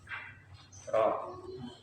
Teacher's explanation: Istifal dulu. Ro makhrajnya ujung lidah menempel pada gusi bagian atas.